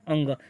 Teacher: कंठ से भी और नासिक से, दोनों से बोला जाता है